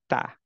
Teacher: tip of the tongue যাবে actually আমাদের গামসে right upper গামসে